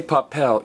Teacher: When you say papel, you're not stressing the next to last vowel. You're not stressing the A, you're stressing the E.